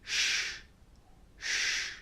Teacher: air over the tongue teeth and lips for example a sound if you put your hand or your fingers here again on your throat you will not feel any vibration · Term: unvoiced